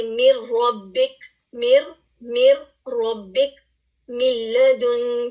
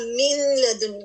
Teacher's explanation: اور اس کے بعد ادغام کامل کیا ہے کہ نون ساکن کے بعد اگر لام اور را آ جائے تو ہوتا یہ ہے کہ لام اور را کمپلیٹلی نون کے اوپر اوور کم کر لیتے ہیں اور غنہ مکمل طور پہ غائب ہو جاتا ہے. جیسے میر ربک، میر ربک، ملدن، ہم من لدن نہیں کہہ رہے، یعنی اس میں کہیں سے بھی آپ کو غنہ نظر نہیں آ رہا.